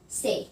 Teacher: Diphthong is the gliding vowel that may continually change the quality. For example like A for say.